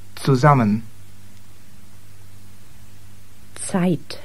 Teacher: the German Z is pronounced as if it were TS.